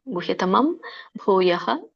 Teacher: ಅನುಸ್ವರ ನೋಡಿ ಅಲ್ಲಿ ಮ ಬರುತ್ತೆ ಪ ವರ್ಗದಲ್ಲಿ ಹಾಗಾಗಿ ಮ ಬರುತ್ತೆ